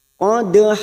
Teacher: Kita tebalkan qad dan kita pantulkan karena ada huruf dal sukun yang mati asli di tengah kalimat. Namanya qalqalah sugro.